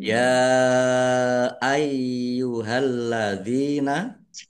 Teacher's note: Tetapi karena bertemu dengan huruf alif di kata yang berbeda maka menjadi mad jaiz munfasil. Dibaca panjang. Boleh lima, boleh dua harakat.